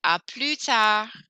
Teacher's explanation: I don't hear the S on the end. I don't hear the D on the end.